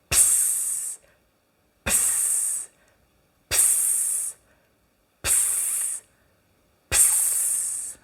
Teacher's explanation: Donc on retient l'explosion du peu et on relâche le souffle sur le se de manière très tonique. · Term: consonnes explosives suivies du souffle